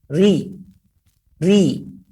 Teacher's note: Ketika di murakkab, ketika kasrah, maka dia sangat tipis. Ri. Suara benar-benar ke bawah. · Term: huruf ra